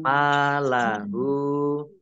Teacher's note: Malahu, mim fathah berdiri, mim fathah alif, mat tobi'i, panjang 2 harokat, kemudian hak domah terbalik, ini mat silah qasiroh, panjang 2 harokat sama dengan mat tobi'i, mat silah qasiroh.